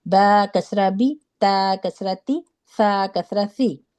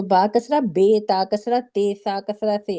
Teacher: یہ جو با کسرہ بے پڑھنا ہے نا، یہ مجہول کر دیتا ہے قرآن کو. یہ با کسرہ بے نہیں ہوتا، ای کی ساؤنڈ آئے گی اس میں